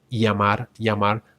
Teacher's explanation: This is probably one of the most controversial sounds in Spanish because we have three different sounds for this double L sound. We have the ya, as in beyond, beyond, ya. So it goes like llamar, llamar, and it's a very common sound in Mexico